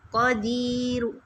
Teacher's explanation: قدیر یعنی لاسٹ جو حرکت ہے اس کی میں نے ہلکی سی پیش ادا کی ہے، پوری نہیں، بہت تھوڑی کہ قریب والا سن سکے، تو تب را کو موٹا ادا کیا جاتا ہے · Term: وقف بالروم